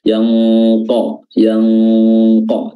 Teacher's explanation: makhraj qaf itu adalah pangkal lidah aqsal lisan, diangkat bertemu dengan langit-langit bagian dalam atau langit-langit lunak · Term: ikhfa